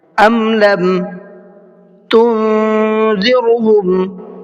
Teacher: تم کی نون میں اخفا کریں گے، تھوڑا سا ناک میں آواز کو چھپا کر کے پڑھیں گے